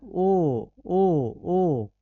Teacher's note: कंठोष्ठ जिसका उच्चारण कंठ और ओठ दोनों से होता है